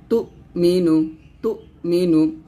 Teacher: হামজা পেশ তো ধাক্কা দিবেন যেন আইন না হয়ে যায় তো এরকম চাপ দিবেন না হালকা করে ধাক্কা দিয়ে বলবেন তু